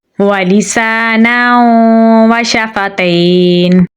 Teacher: शीन में सिफ्त तफशी पाई जाती है, इसकी आवाज़ मुंह में फैल कर पढ़ी जाएगी